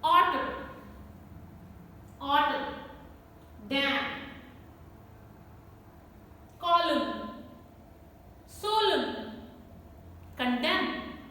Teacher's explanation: Autumn, autumn, dam, column, solemn, condemn. No N sound is there. N is silent.